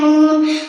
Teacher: 9 নম্বর মাখরাজ জিহ্বার আগা তাল বরাবর উপরের তালের সঙ্গে লাগিয়া